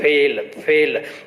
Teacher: नीचे वाले जो ओठ होते हैं और ऊपर वाले दांत होते हैं, इन दोनों को स्पर्श करके बोलना होता है। नॉर्मली जब हम फ बोलते हैं तो दोनों ओष्ठों को मिलाते हैं, फिर ये क्या कहलाता है, ओष्ठ है। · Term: दंतोष्ठ